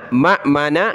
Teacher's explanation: ये हमज़ा साकिन है, झटका देंगे